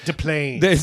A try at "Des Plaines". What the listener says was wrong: No, it's with an S. It's Des Plaines.